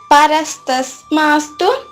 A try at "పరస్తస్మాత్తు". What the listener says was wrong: నేను స పలకడం లేదు